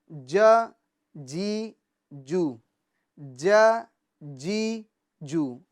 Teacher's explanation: یعنی بیچ زبان اور بیچ تالو سے یہ جیم شین یا ادا ہوتے ہیں. ٹھیک ہے، تو بیچ زبان یہ بیچ تالو پہ لگائے تو انشاءاللہ یہ حرف صحیح طریقے سے ادا ہو جائے گا.